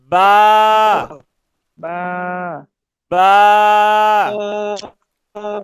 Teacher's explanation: দুই ঠোঁটের ভিজা জায়গা হইতে উচ্চারিত হয় বা